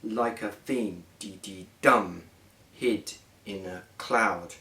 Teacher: the rising rhythm of two anapaests there